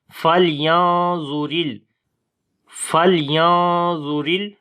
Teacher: لام کے اوپر صفت توسط کریں گے، ہلکی سی آواز کو جاری کریں گے